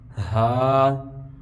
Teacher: یہ ہا سینے کی طرف سے ادا ہوگا